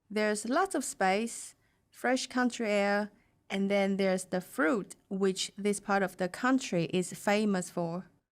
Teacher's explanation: pauses match both the meaning of the text and the punctuation she pauses where there are commas and also briefly at the end of the sentence